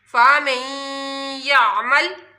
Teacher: आमालहुम फ़मन यामल, फ़मन, देखिए नून और या मीम को नून जब हिजे करेंगे तो फ़ा ज़बर फ़ा, मीम नून या ज़बर मई, और जब पढ़ेंगे तो नून बीच में से नहीं पढ़ा जाएगा